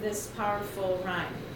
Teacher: I didn't give it three syllables I just gave it two